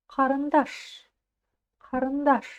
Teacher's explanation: И ударение будет стоять на даш.